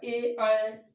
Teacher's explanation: कंठ और तालु से आता है